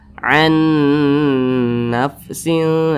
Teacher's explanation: huruf nun ini dimasukkan ke huruf nun yang di depannya begitu. Jadi dibaca an nafsin. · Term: idgham bi gunnah